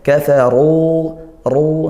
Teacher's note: ra-nya berharakat dhammah, maka kita baca tafkhim, ya, dibaca tebal